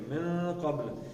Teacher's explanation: یہ نون کا آپ نے اس کو اخفا کرنا ہے کیونکہ آگے قاف ہے